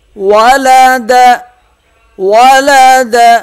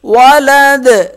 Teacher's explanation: ولد دال پہ قلقلہ کریں گے وقف کی صورت میں